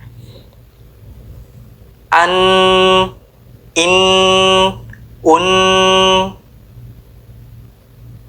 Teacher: mendorong ujung lidah pada gusi dua gigi seri atas dan mengeluarkan suara dengung dari rongga hidung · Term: Huruf nun bertasydid